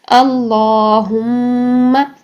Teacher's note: آگے دیکھتے ہیں اللہم، اسی طریقے سے ہم پڑھیں گے، اس میں جلالہ کو موٹا کرتے ہوئے اور میم مشدد پر غنہ کرتے ہوئے 2 سیکنڈ کے لیے. 2 سیکنڈ کے لیے کھڑی زبر کو لمبا کریں اور 2 سیکنڈ کے لیے ناک میں میم مشدد کا غنہ ٹھہرائیں · میم کی جو زبر ہے اس کو آپ نے لمبا نہیں کرنا